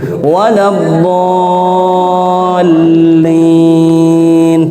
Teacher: Jadi panjangnya 3 alif atau 6 harokat. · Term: mat lazim kalimi mutsaqqal